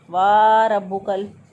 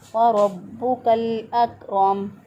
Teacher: बाज़ लोग वाव को ज़्यादा लंबा कर देते हैं, इसको पढ़ते हैं वा रब्बुकल, तो गलत हो जाएगा।